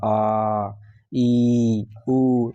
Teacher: बहुत समय लगता है ऐसा बोलने में, आ ई उ, इसलिए इसको दीर्घ बोलते हैं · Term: दीर्घ वर्ण